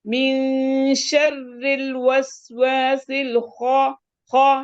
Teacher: خا منہ کھول کر بولیں کیونکہ اس میں انفتاح ہے